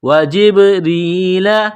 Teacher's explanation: ورسلہ وجبریل، جیم کو با کے ساتھ ملانا ہے، با کے اوپر قلقلہ کریں گے. را کو یا کے ساتھ ملائیں گے، را کے نیچے زیر ہے، را کو باریک کرنا ہے